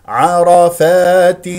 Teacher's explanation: الالف وهنا لدينا التاء فيها تنوين كسر بعد التنوين جاء فا اذا اخفاء لان الفاء من حروف الاخفاء والغنه تكون مرققه بمقدار حركتين